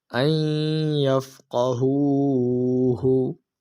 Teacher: نون ساکن میں ادغام کا قاعدہ لگ رہا ہے، اس وجہ سے ہم اس نون ساکن میں گننا کر کر پڑھیں گے